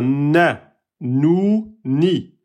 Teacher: Au début de la prononciation, vous allez utiliser le nez. Après, quand vous allez prononcer na, ça sortira ensuite de la bouche. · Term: noun